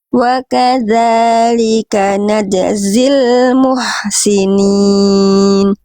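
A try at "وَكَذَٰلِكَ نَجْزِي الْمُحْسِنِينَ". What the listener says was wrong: Oke, jimnya diringankan lagi. Najzi wa kadzalika najzil muhsinin.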